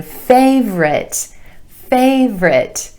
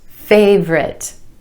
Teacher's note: two syllables here with emphasis on the a sound in the first syllable